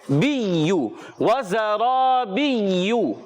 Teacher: اور یہاں دیکھیے یا پر تشدید ہے، جب کبھی یا پر تشدید آ جائے تو بعض بچے اور بڑے اس کو پڑھتے ہیں بیجو، یہ غلط ہے، اس کا تلفظ ہوتا ہے بیو، وزرابیو۔